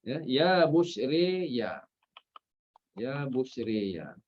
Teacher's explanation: jangan salah imalah, bukan pada ya yang diimalahkan. Ya, pada ra tu. Pada ra. Okey.